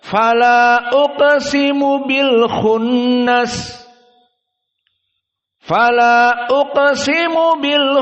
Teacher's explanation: mereka menghukumi majaiz munfasil dengan taksir maka dibaca taksir Jadi dua harakat saja